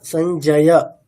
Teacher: অকার আছে সেখানে যেন আমরা শেষে অ এরকমই শুনি নট ও